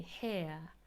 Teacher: There's a little elevated r in British English, but that can even be left out. And some people might really just say hair, and there's no r whatsoever. And it's fully non-rhotic.